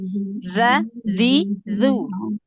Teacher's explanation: gesekan sedikit makhrajnya ujung lidah, gesekan sedikit ke ujung gigi seri atas.